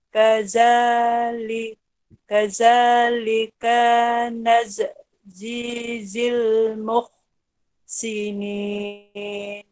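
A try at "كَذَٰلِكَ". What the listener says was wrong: Tadi terpanjang yang ka, lepas tu yang za tu dia punya sebutan tu kita macam kasih keluar lidah sikit. lidah tu keluar sikit. Kazalika ka jangan panjang. Ka jangan panjang.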